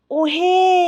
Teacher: প্লুত স্বরে আরো বেশি প্লুত স্বরে আরো আ করে মানে আরো যেমন কাউকে ধরো আমরা ডাকি ওহে যে সুরটা অনেকটা ভেসে যাচ্ছে না এটাই প্লুত স্বরের উদাহরণ